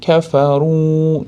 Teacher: Kafaruda vov mad borligi uchun, ya'ni vovul jamoa deb qoladi arab tilida. Ko'pchilikni bildiradigan vov bo'lganligi uchun kafaru deb cho'zamiz.